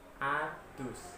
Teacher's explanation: D dental sumbernya atau tempat keluarnya huruf bukan dari langit-langit, akan tetapi dari gigi. Apabila lidah kita menyentuh gigi dan kita keluarkan bunyi D, maka akan terjadi seperti ini.